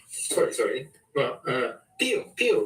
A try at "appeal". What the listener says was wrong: Appeal. No, that's pill. No, peel, like an orange peel, not pill.